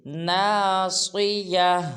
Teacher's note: اس میں آخر میں تا ہے، جب ہم وقف کریں گے تو اس کو ہا ادا کریں گے